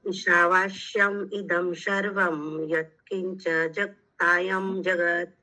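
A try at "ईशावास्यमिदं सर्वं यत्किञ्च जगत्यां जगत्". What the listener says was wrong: जगत, जगत्याम, जगतायम नहीं,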